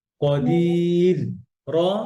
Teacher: ইয়া সুকুনের পরে র সুকুন হলে র পাতলা